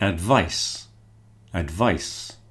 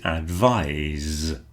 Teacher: There are others where the the c changes to an s. So you've got words like advice, advice, but the verb is advise with a Z.